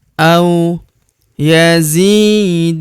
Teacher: Huruf du kita panjangkan 2 harokat karena terdapat waw sukun di depannya